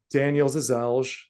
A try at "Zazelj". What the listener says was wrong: It's close. L is kind of silent. It's like Zizej, I think is usually, but you know,